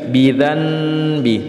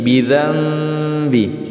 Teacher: suara nun sukun berubah menjadi huruf mim disertai dengan dengung. Bidzambi, bukan lagi bidzanbi, tapi bidzambi ya. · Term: iqlab